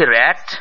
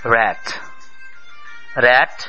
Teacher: আমরা বলছি র‍্যাট অর্থাৎ র কে স্পষ্ট করে ঝরঝরে কায়দায় উচ্চারণ করছি কিন্তু ইংরেজিতে র উচ্চারিত হচ্ছে কতটা নরম এবং কোমল কায়দায়